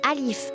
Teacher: ça se prononce un peu plus long que le a